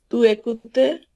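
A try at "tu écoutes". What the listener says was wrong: না আবার একুতে কেন? আপনার ফরাসি লাস্টের সাউন্ডটা খুবই গুরুত্বপূর্ণ, হ্যাঁ? আপনি লাস্টে যদি সাউন্ডে উল্টাপাল্টা করেন সেটা কনজুগেশন ভুল হয়ে যায়। কারণ দেখেন ভুর সঙ্গে সবসময় লাস্টে এ হয়, হ্যাঁ? ভু জেকুতে এ সাউন্ড পাবেন অলওয়েজ এ। নুর সাথে যখন কনজুগেশন করবেন অ পাবেন সবসময়, নু জেকুত অ, ঠিক আছে?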